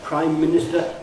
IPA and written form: ˈpraɪm ˋmɪnɪstə (Prime Minister)